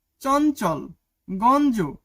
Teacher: স্বতন্ত্র ব্যবহারে অ এর মত আর সংযুক্ত ব্যঞ্জনে অনেকটা ন এর মত নাকে বাজা ন এর মত উচ্চারিত হয়